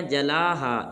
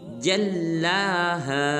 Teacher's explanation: جیم کو لام مشدد کے ساتھ ملائیں گے اور لام کو ایک الف مقدار لمبا کریں گے اور پڑھیں گے جلاہا۔